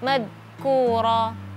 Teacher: jadi huruf dal ini termasuk huruf yang lentur atau dia memiliki sifat rakhawa. Jadi dengan mazkura, bukan syiddah, bukan keras hurufnya, tapi hurufnya dilentur, mazkura.